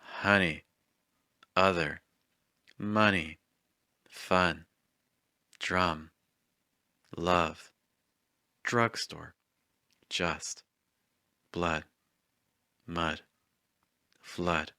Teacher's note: The top and bottom teeth are not touching. The middle of your tongue is a little high, and the sound is like uh. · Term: schwa sound